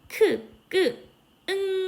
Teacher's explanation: 응 소리를 내봐도 이응 소리를 이렇게 느껴봐도 연구개 쪽을 혓부리가 막고 있는 거 느낄 수 있어요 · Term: 연구개음